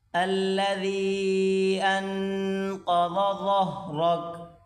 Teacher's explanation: الذي ان، یہاں پر کھینچ کر پڑھیں گے، الذي انقض، یہاں پر غنہ کریں، قاف کو موٹا کر کے پڑھیں، بڑی کاف ضاد کو بھی موٹا کریں گے